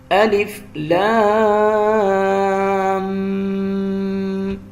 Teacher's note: غنے کی ایک تو آواز ناک میں بھی جائے گی، اور اسے ہم نے 2 سیکنڈ بھی لمبا کرنا ہے